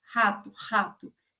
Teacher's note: então o som ele é produzido mais no fundo e aí ele é glotal, porque os músculos da glote que vão articular